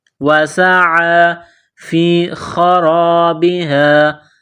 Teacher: خا جس طرح انسان گلے سے بلغم نکالتا ہے اس خا کو نکالنا ہے